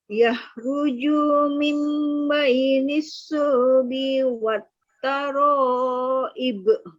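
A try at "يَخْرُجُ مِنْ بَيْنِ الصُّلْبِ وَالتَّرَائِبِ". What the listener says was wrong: Di yakhrujunya di huruf jim jangan dipanjangin. Yakhruju mim baini gitu.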